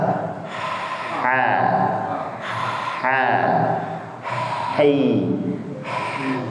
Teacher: Katupnya itu nggak nyentuh, cuman menghimpit. Sehingga suara yang dialirkan itu nafasnya itu lebih terasa. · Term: huruf H